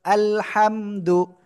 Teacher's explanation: গলাটা চেপে পড়তে হবে একটু বাতাস বের হবে